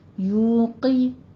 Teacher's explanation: آگے یو میں آپ نے نرمی کے ساتھ 2 حرکات کے برابر ہونٹوں کو گول کرتے ہوئے واو مدہ کو کھینچنا ہے اور قوف کو آپ نے کسرہ ہے یوقی، قوف پر پڑھی جائے گی لیکن کسرہ کی آواز شارپ رکھنی ہے، باریک رکھنی ہے